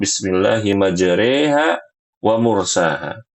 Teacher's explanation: Sedangkan hukum fathah, ya ini dibaca A, dan imalah dibaca E